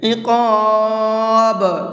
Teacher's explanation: یہ جو لاسٹ میں آواز نکل رہی ہے ڈبل سی، اسی کو قلقلہ کہا جاتا ہے